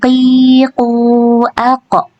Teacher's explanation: huruf qaf juga tidak mengeluarkan angin ya, karena dia bukan huruf hamz ya, jadi dia tidak boleh mengeluarkan angin.